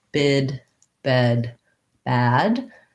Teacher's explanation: If I say, for example, bid, bed, bad, they're all relaxed vowels and my jaw is opening a little bit more for each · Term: front vowels